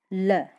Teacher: ऐसी ध्वनियां जिनको उच्चारित करते समय अपनी जीवा ऊपरी पटल पर टच होती हो और प्राणवायु जो है वो जीवा के दोनों पार्श्वों से बाहर निकलती हो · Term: पार्श्विक ध्वनियां